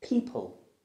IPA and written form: 'piːpəl (people)